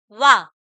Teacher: दात का भी प्रयोग है ओठ का भी प्रयोग है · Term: दं तोष